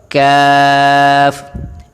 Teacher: زبان کی جو جڑ ہے اوپر والے تالو کے نرم حصے سے لگے لیکن ذرا منہ کی طرف